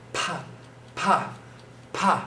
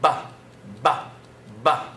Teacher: the only thing that makes those two sounds different is in the vibration